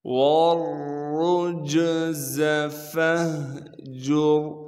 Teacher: پھر را پر پیش ہے تو ہم نے پھر را کو آگے جیم سے ملانا ہے کیونکہ جیم ساکن ہے، جیم حروف قلقلہ میں سے ہونے کی وجہ سے جیم پر قلقلہ کیا جائے گا، زا کو سختی سے ادا کریں گے